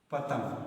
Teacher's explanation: पतंग को बोलते समय जो है हमारा जो हवा निकल रहा है वो हमारे नाक से निकलता है। यानी उसको जब पतंग का उच्चारण करते हैं तो हवा जो हमारे नाक से निकलता है। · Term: अनुस्वार